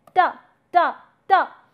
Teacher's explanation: you are touching the tip of the tongue with the upper teeth and therefore you are coming up with these sounds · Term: dental sound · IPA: /t/